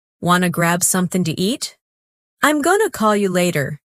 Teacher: want to becomes wanna, going to becomes gonna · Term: drop sounds